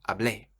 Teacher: the accent on the E means you stress that last part of the verb